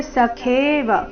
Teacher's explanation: ಸಖೇವ ಖೇ ದೀರ್ಘ ಮಹಾಪ್ರಾಣ